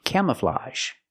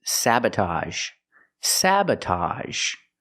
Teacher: the AGE makes the open sound ah plus the zh sound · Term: AHZH